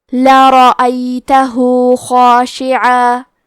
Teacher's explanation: آخری میں ہاں پہ الٹا پیش ہے، یہاں حکم ہے مد صلہ صغرا تو ہم اپنی آواز 2 مد کے برابر لمبی کریں گے